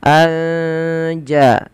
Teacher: cara membacanya menyamarkan suara nunnya kepada huruf ja Anja sambil ditahan dua harakat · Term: Ikhfa Hakiki, ikhfa hakiki